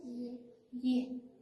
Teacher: Orqadan ham aytmayapmiz, oldindan ham ye deb qo'ymayapmiz. Ye deyapmiz, tilni o'rtasidan hosil bo'lyapti. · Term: til o'rta